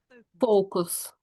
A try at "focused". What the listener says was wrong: Yeah, that's getting there. Focus. That's it. And maybe we'll put the ed on the end now. So focused.